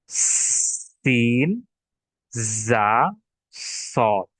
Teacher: এই 3টি হরফ উচ্চারণের সময় আমাদের মুখ দিয়ে বাতাস বের হয় এবং সেই আওয়াজটা শীষের মতো শোনা যায়, যেমন সিন, জা, সদ। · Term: শীষ ধ্বনি